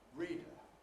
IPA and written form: ˈriˑdə (reader)